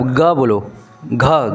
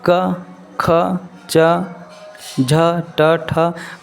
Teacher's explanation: घ बोलने से कंपन उत्पन्न हो रहा है